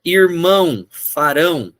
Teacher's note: o ão sempre vai puxar a pronúncia pro final